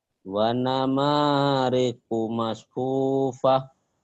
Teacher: Iya, gak ada yang panjang. Panjangnya cuma mak doang.